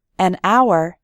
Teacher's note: We say a hat because hat starts with an h sound, but in the word hour, the h is silent, so we say an hour